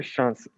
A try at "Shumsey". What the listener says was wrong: It's Shumsey. It's almost like the A is a U, so Shumsey.